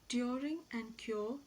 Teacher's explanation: a glide from a centralized back unrounded vowel just above half closed to a central unrounded vowel between half closed and half open position